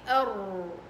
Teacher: طرف لسانك بيكون قريب من مخرج الراء الآخر، قريب لدرجة إنه بده يرعد، بتحسي في ذبذبات هون